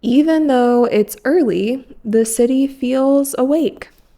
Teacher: even though this is the end of a sentence, you can bring your voice up when you say awake.